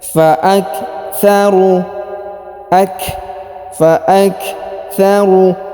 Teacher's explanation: Huruf ru dipanjangkan 2 harokat karena di depan huruf ru terdapat waw sukun. Nah, di depan huruf waw terdapat alif, ini tidak dibaca atau tidak dianggap ya.